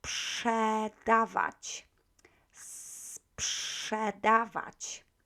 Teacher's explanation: Try to prolong this S letter before you go into psz first, okay? So sprzedawać. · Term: cluster